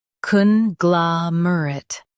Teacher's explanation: Emphasize glah and soften mer.